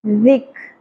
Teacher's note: ذال نرمی سے ادا ہوگا، سیٹی کی آواز نہیں آنی چاہیے. ذک، کاف بھی باریک ہوگا، را پر ہوگا، کھڑی زبر ایک الف کے برابر کھینچیں گے.